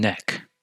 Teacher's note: You can feel the tongue touching the alveolar ridge when you say N, as in neck.